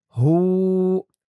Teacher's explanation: পেশের পরে ওয়াও সাকিন হয়েছে, এক আলিফ টান হয়েছে। হু, এমন উচ্চারণ।